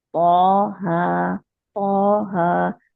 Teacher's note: हा 2 काउंट अलिफ मद्दा है · तो के लिए मोटा करेंगे, जबान की जड़ को उठाएंगे, और जबान की नोक कहाँ लगेगी? सनाया उलिया के जड़ में।